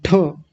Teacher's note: ठ बोलते ही हमारी जीवा कहाँ जाके लगती है? ऊपर, मूर्धा में। तो जहां ऊपर जाकर के उस गड्ढे में हमारी जीवा लगती है उसी को मूर्धा बोलते हैं। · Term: मूर्धन्य ठकार